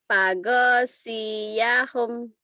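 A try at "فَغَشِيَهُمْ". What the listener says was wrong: Nggak ada yang panjang. Fagosyahum. Fagosyahum.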